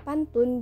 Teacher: Asimilasi regresif umpamanya bunyi P adalah bunyi hambat bilabial, tetapi bunyi P pada silabel pertama kata pantun dilafalkan secara apikoalveolar. Perubahan bunyi hambat bilabial P menjadi bunyi hambat apikoalveolar adalah karena pengaruh nasal apikoalveolar N.